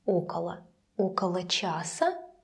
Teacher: the first Oh is stressed